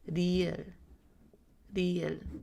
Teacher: You're going to roll your R at the beginning.